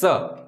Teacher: દંત્ય શ કીધું હોય તો દાંતે જીભ અડાડીને બોલવું પડે સ.